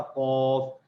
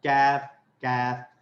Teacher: قوف کاف بھی ایک ہی جگہ سے تقریباً ادا ہو رہے تھے، لیکن قوف میں ہم منہ کو تھوڑا گول کر لیتے تھے تو اس سے ہمارا قوف جو قلقلہ ساؤنڈ تھا یا اس کے اندر جو بولڈ ساؤنڈ تھا وہ خود بخود پیدا ہو جاتا، اور ایک لائٹ سی آواز کیف کیف۔